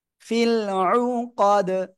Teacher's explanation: অক্ফ করলে দাল সাকিন কলকলা হয়ে যাবে। ওই যে কফতা বা জিম দাল, এই পাঁচটার একটা অক্ষর দাল এখানে আসছে, এজন্য সাকিন হইলে ধাক্কা দিয়ে পড়বো।